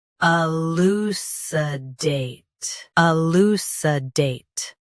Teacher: Stress date. Keep lou and sa soft. Elucidate. Elucidate.